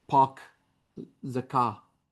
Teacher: Boston English features including R dropping after vowels